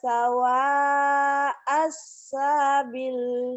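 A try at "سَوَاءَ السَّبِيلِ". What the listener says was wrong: Sa-nya pendek.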